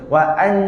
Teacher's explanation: nanti kita akan dengar bunyi huruf nun yang jelas